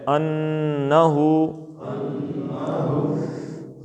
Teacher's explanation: مفصلا والذین آتیناہم الکتاب یعلمون انہ، اب یہ نون مشدد ہے، یہاں آپ نے زبان تالو کے ساتھ لگا کے نون کو کھینچنا ہے